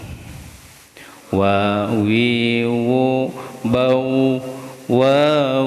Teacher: Wawu ini masuknya atau makhrajnya, tempat keluarnya itu perpaduan antar bibir atas dan bibir bawah. Ini masuknya huruf syafatain, dua bibir.